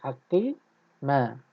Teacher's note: Hakima kalau kita waqaf mana tak ada bunyi. Tak ada bunyi nun sukun tambahan tu.